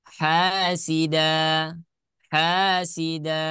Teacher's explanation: karena dia di sana ada hukum mad iwad maka dibaca Dua harakat